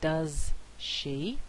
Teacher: instead of this fricative being produced as alveolar it's now produced as post alveolar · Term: post alveolar assimilation